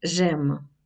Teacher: коли випадає голосна під впливом наступної голосної, як у жем. Я люблю. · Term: випадіння